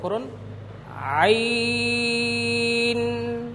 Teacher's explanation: আইন বলার শেষে দুই ঠোট সাথে সাথে লেগে যাবে না